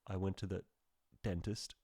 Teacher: there's a pause there there's a stop there's silence and then it burst forth with a d sound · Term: stop sound